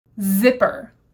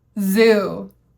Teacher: my teeth are together my tongue is forward I'm pushing air out but this time my voice box is on